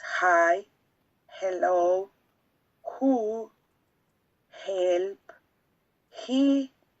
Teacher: It's fricative because the airs come through the vocal cords and pass through the mouth, making a little obstruction, but doesn't produce vibration in the vocal cords. And it's glottal because the place of articulation is making in the glottis.